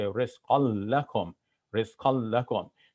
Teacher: the noon of tanween gets assimilated into that next letter